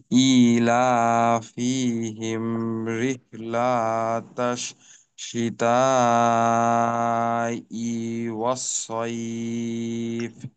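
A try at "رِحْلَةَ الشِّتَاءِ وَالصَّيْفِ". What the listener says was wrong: যেখানে টান নেই ওইখানে বারবার টান হয়ে যাচ্ছে। যেমন রিহলাতাশ, এখানে রিহলাতাশ হয়ে গেছে, তো এখানেও একটা অতিরিক্ত টান, এইটাও বাদ দিতে হবে। রিহলাতাশ, রিহলাতাশ।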